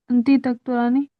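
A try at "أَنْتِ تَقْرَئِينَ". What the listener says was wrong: अच्छा, तकराऊ है, ये तकराऊ है, तकराना को कंफ्यूज मत होइए। तकराऊ से तकरईना, अंती अंती तकरईना। हाँ, या नून लास्ट में लगेगा और ता स्टार्टिंग में, तामलीना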